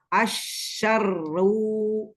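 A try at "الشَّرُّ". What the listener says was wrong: Lagi, pangkal lidahnya naikin. Belum tebal. Ujung lidah. Lidahnya ke ujungnya ke gusi. Ini di sini, tekniknya pangkal lidahnya dinaikin. Umi coba bilang kof tapi dommah. Huruf kof tapi yang dommah. Ada rasa nggak nyaman nggak sih? Di belakang tuh ada nggak nyaman kan?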